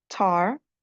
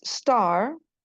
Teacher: Satunya aspirated atau ada letupannya, satunya tidak ada letupannya.